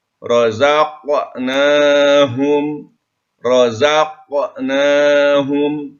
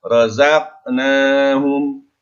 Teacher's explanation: Ada pantulan dengan patulan yang kecil karena ini adalah qalqalah sugro ya.